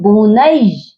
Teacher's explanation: تو یہاں اکثر لوگ غلطی کیا کرتے ہیں، نون یا زبر نئی لمبا کر دیتے ہیں، تو یہاں پر کیا یا مدہ نہیں ہے، یا مشدد ہے، اس کو ہم نے سختی سے ملا کر پڑھنا ہے